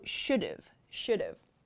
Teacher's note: should have this should comes from should have so this have it's like we drop the ha part and just use the v sound